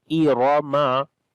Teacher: Hamza we read with kasra e sound. Ra we read in heavy sound due to fatha. Irama. Irama, we do not long any letter here.